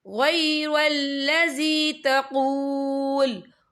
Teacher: वफ़ की सूरत में लाम जो है साकिन हो जाएगा।